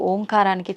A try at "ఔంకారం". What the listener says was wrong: అది ఓంకారం కాదు, ఔంకారం. మనం పలకడమే దాన్ని తప్పు పలుకుతున్నాం. మనం మాట్లాడుతున్న ప్రతి మాటల్లో ఎక్కడో ఒక చోట అకారము, ఉకారము, మకారము ఉంటాయి. అకార ఉకార మకార అర్ధమాత్ర ఇది ఓంకార. అర్ధమాత్ర మకారం అన్నాడు. ప్లస్ ఆ. ఔం అని ఉచ్చరించినప్పుడు అకారము ఉకారము రెండూ పలకబడి ఓంకారం దీర్ఘమవుతుంది.